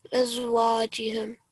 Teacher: you're going to prolong the waw with fatha for 2 seconds because alif again is a letter of prolongation